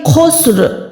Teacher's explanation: خو یہاں پر موٹا حرف ہے اور حلق کے اوپر والے حصے سے خراش کی آواز آتی ہے خو میں، تو یہ خسر۔